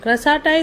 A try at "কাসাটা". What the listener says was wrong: ক্রাসাতা নয়। ক্রা নয়।